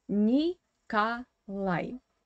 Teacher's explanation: this O is in unstressed weak position without stress, and it should be pronounced as A.